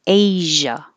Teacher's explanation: it uses the zh which is the same position as sh · make sh and then turn on the sound, the vibration, make noise in your throat. Shh, and keep moving air.